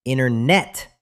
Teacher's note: Oh, you dropped the T. · When a T comes after an N, we just pretend it doesn't exist. It's too much work for our tongues.